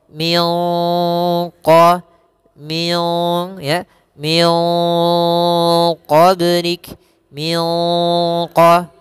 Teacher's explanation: nunnya kita samarkan kepada huruf qaf, dan huruf qaf ini termasuk huruf isti'la, maka agak sedikit ditebalkan ikhfa'nya